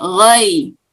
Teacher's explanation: bunyi ghain bukan go, tapi ro. Dan mulutnya tidak membulat.